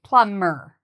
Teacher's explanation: the word plumber has a B, but we do not pronounce the B. So it's like it doesn't exist.